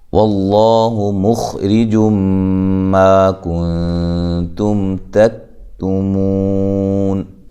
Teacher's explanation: خا کو موٹا کرنا ہے، را کو باریک · لفظ اللہ کو خوب موٹا پڑھنا ہے۔ لفظ اللہ سے پہلے حرف پر زبر یا پیش ہو تو لفظ اللہ کو موٹا پڑھا جاتا ہے۔